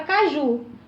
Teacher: Caju é uma palavra oxítona, porque o acento, a parte mais forte da palavra caju é no ju